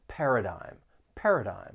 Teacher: the third syllable has a silent G and the vowel sound it's a long I sound not a short vowel sound · it has three syllables the stress is on that first syllable but it's that third syllable that can be a little tricky